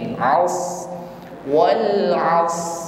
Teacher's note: Isti'la itu irtifa'u aqsal lisan ilal hanafil a'la. Ketika mengucapkan shad, ada lidah bagian belakang yang naik ke langit-langit mulut sehingga bunyi shad menjadi tebal.